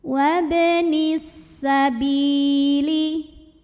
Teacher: Alif lamnya dinamakan dengan alif lam syamsiyah karena alif lam menghadapi huruf syamsiyah yaitu sin, maka alif lam tidak dibaca, dilewat, idgham syamsi.